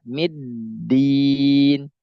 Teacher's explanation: Dalnya mau keluar tapi terhalang oleh sifat yang syiddah. Ya, dalnya mau keluar terhalang oleh tasdid yang mensifati dia syiddah.